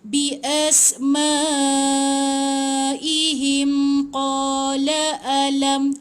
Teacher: mim mati bertemu dengan qaf kan. So kalau kita sambung, jangan dengungkan, jangan tahan 2 harakat.